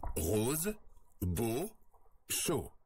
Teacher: On l'appelle le O fermé. Pour prononcer ce son, on ferme davantage la bouche que pour le O ouvert.